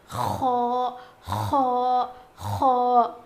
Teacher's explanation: خو خو خو موٹا پڑھا جائے گا. اس کا مخرج ہے حلق کے اوپر والے حصے سے خو ادا ہوتا ہے